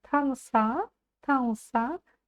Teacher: буква Ы читается очень кратко можно сказать что её там нет